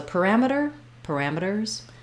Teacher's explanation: You don't want parameters, but you do need that tight back American R